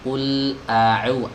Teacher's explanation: Intinya di sini tidak boleh ada percampuran huruf antara hamzah dengan ain, harus benar-benar dipisahkan ya. Qul a'u, a-nya dibaca murni hamzah, kemudian u-nya dibaca ain ya.